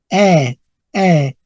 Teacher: La E corta y la AE se transforman en una E abierta